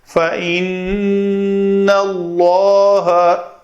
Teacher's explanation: اللہ اسم جلالہ کا لام جب ماقبل زبر ہو تو اس لام کو پر پڑھا جاتا ہے۔ فَإِنَّ اللَّهَ، ایک طریقہ یہ بھی ہے فَإِنَّ اللَّهَ، یہ لام پتلا ہے، ایسا نہیں پڑھنا ہم نے۔